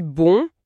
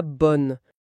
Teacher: voyelle elle-même qui est teintée nasalisée